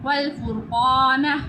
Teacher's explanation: قاف پہ منہ کو گول کرتے ہیں، ڈنڈے والی کاف پہ منہ کو گول نہیں کرتے، نقطوں والی قاف کو منہ کو گول کیا جاتا ہے